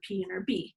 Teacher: produced with both lips coming together to occlude the airway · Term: bilabials